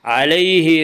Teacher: یالین کو نرم آواز کے ساتھ جلدی پڑھیں گے۔